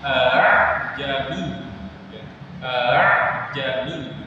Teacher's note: A'ajami bukan a'ajamiyun tapi a'ajami. Jadi hamzah yang kedua itu bacanya enggak jelas, atau di sini sebenarnya memiringkan bunyi hamzah yang kedua ya. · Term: tashkil